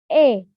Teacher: Selanjutnya bunyi E yang berada di bagian depan dan tengah. Maka rahang akan setengah tertutup dan lidah depan akan ikut terlibat.